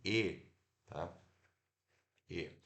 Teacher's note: a ponta da nossa língua descer um pouco tá na segunda altura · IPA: /e/